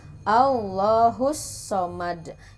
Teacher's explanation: Ya, jadi terdengar huruf sodnya ada desisan. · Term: sifat sofir